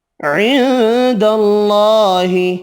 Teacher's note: عند اللہ، نون کا اخفا ہوگا، اللہ کا نام والا لام زبر کی وجہ سے پر پڑھیں گے